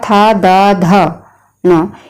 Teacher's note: ये सारे जो हैं वर्ण आते हैं बोले जाते हैं दंत से